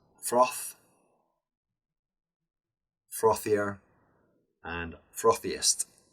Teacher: the TH sound remains the th sound with air and not the voiced th sound